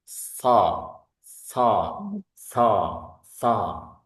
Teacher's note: Sifat yang dimiliki huruf shad yang pertama, yakni huruf yakni hamas suaranya ada angin yang keluar, ada suara ada anginnya ketika bersuara.